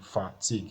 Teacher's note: a verb so we assuming that it's a verb right now so the stress will be fatigue so we are stressing the second part · So the stress will be fatigue. So we are stressing the second part. So you have fa at the first part, then you have tig at the second part.